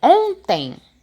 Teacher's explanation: Dígrafo vocálico é quando eu tenho duas letras que formam um dígrafo, né? Duas com som de um, mas o som é anasalado. Ele não é um som que sai pelas cordas, não sai pela boca, né? · Duas com som de um, mas o som é anasalado. Ele não é um som que sai pelas cordas, não sai pela boca, né? O som sai pelo nariz. Ontem é um encontro de dígrafo vocálico.